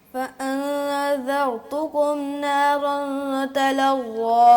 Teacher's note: ذال کو باریک رکھنا ہے اور را کو موٹا کرنا ہے